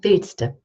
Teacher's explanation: Willst du becomes willste. So I drop the D and I just add the du as a schwa